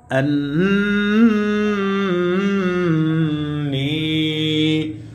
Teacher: আন্নী, নুন ইয়া জের নি, জেরের পরে ইয়া সাকিন মাদে হরফ, এক আলিফ টান হবে মাদ্দে তবাই।